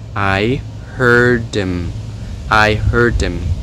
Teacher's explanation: ở trong câu I heard him thì cái âm ở trong từ him bị giảm lược, cho nghe thành là I heard him, I heard him.